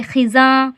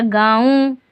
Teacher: देखिए, खेज़र खी, जे अलिफ ज़बर ज़ा खिज़ा और नून गुन्ना लग रहा है तो नाक से आवाज़ आएगी, यानी कि गुन्ना करके पढ़ा जाएगा, तो बोलेंगे खिज़ा।